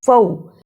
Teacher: فا زبر واو فو یہ حرف لین ہے، اسے جلدی پڑھنا ہے